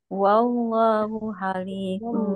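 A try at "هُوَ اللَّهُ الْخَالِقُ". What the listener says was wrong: Kholikul, awas tuh kok jangan ha.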